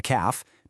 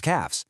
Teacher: The F sound kind of softens into a V sound